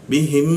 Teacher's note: hurufnya itu masuk ke huruf berikutnya lalu ditahan dua ketukan lebih ke arah dengung